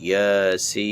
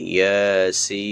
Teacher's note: ইয়ার উপরে খারা জবর, এটাও মাদ, এক আলিফ টানতে হবে এবং সিন হচ্ছে সিনের নাম 4 আলিফ ধরে টানতে হবে। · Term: মাদ লাজিম হারফি মুখাফফাফ